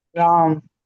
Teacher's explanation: म के साथ स्वर नहीं है, वो सिर्फ व्यंजन अकेला है, तो वो दीर्घ बन गया, छोटा बन गया, तो वो सिर्फ हल्की सी प्रोनाउंसिएशन होगी, राम।